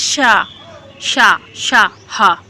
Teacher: ऊष्म व्यंजन आपके कितने होते हैं, तो 4 होते हैं, और इनका क्या होता क्या है, जब इनका हम उच्चारण करते हैं जो ऊष्मा जो होती है वो रगड़ खाकर निकलती है